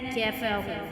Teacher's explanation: واو ساکن سے پہلے پیش آ گیا تو یہ حروف مدہ میں سے آتا ہے، اس کو ہم ایک الف یعنی 2 حرکات کے برابر کھینچتے ہیں